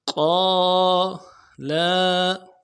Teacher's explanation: لام زبر، زبر میں لام کو نرمی سے ادا کریں گے